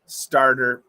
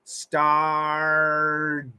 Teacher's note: Well, it's a flap T, so you got to get that. It's got to be fast.